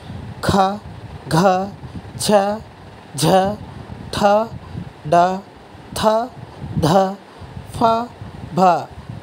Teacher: వంటి అక్షరాలను ఒత్తి పలుకుతాం. ఇలా పలికే వాటిని మహాప్రాణాక్షరాలు అంటారు.